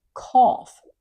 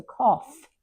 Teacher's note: You hear the f from the gh.